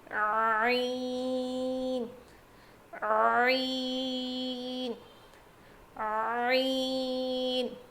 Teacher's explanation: حلق کے بیچ والے حصے سے ادا ہوتا ہے. ہا اور عین کا مخرج سیم ہے.